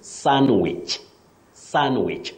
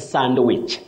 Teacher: what we avoid is pronouncing the D in that word the D is silent so you say sandwich sandwich not sandwich the way many people